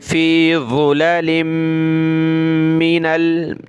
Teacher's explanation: यहाँ मीम के ऊपर तशदीद है और तनवीन भी है तो नाक में आवाज़ पैदा करेंगे